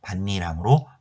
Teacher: 이 음가가 없는 이응 자리엔 니은이 첨가되고요. 니은 앞에 이렇게 디귿이 오면 디귿은 니은으로 바뀌는 비음화 현상에 의해서 밭니랑으로 발음하게 되는 겁니다